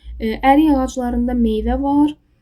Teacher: Yəni daha doğrusu k səsi cingiltləşdi. Y oldu. O birisi sözlərdə də kar samit yoxdur.